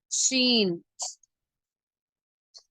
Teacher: நுனி நாக்கை மேல்முரசுடன் இணைத்து வைத்துக்கொண்டு காற்றை உள்ளிருந்து அழுத்தமாக பரவலாக வெளியாகும்போது உண்டாகிறது